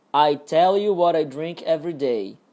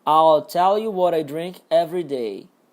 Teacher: eu falei sem o Lzinho aqui do I'll. Eu falei I tell. Ó, I'll tell é diferente de I tell.